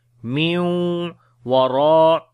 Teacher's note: after the nun sakin the next is waw, we make idgham with gunna